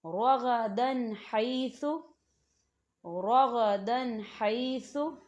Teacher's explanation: اب آپ تنوین کی مثال کو دیکھیں، رغدن حیث، رغدن حیث، تو یہاں دیکھیں دال کے اوپر تنوین ہے اور تنوین کے بعد ہا آ رہا ہے، تو یہاں پہ غنہ نہیں ہوگا، صرف ہم تنوین کی آواز کو ظاہر کریں گے۔